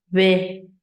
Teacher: This is a modal voice. This is what you would normally use when you're talking.